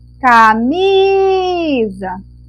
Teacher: o mi vai ser a nossa sílaba tônica, vai ser a nossa sílaba mais forte